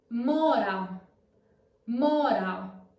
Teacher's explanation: the word Mo as you can see it has anent gra so open o as in off